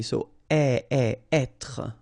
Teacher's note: when you get this accent circonflexe here, you should really pronounce it openly.